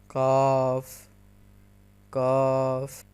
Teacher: اس کا مطلب ہے جو کتاب والا کاف ہے وہ نقطوں والے قاف سے تھوڑا سا نیچے ادا ہوگا، اور وہ آپ کی زبان تھوڑی سی لحاظ سے ٹکرائے گی، یا جسے کوا کہتے ہیں اس سے ٹکرائے گی تو کاف ادا ہوگا۔